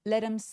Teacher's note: 여기서 let이라고 굴려서 소리내는 이유가 대명사의 H가 사라져서 발음을 하지 않으면이 T가 모음 사이에 끼어 있어서 let이라고 굴러가는 미국식 발음이 완성이 됩니다